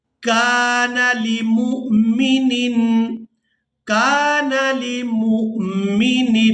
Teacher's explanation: یہاں پر ہم نے حمزہ کو ساکن ادا کرنا ہے اور میم کو جب حمزہ ساکن کے ساتھ ملائیں گے تو جھٹکے کے ساتھ ادا کریں گے